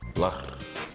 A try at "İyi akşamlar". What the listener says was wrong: Not lah. Lar. Lar. L-E-R. İyi akşamlar.